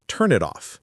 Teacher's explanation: The n in turn links to it. In the t and it links to off.